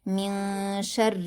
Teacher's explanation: ہم نون ساکن کی آواز کو چھپا کر اور غنہ کے ساتھ پڑھیں گے۔ من شر، را پر زیر کی حرکت ہے اور تشدید ہے تو سختی کے ساتھ باریک پڑھیں گے۔ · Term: اخفا